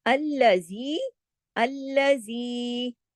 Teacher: زی کو کیوں کھینچا 2 حرکات؟ اس کے ساتھ یا مدہ یا مدہ ہے